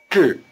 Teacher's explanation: 同 The second syllable, 志, rhymes with 是. The tongue is curled back for the J sound and stays curled back through the long R sound.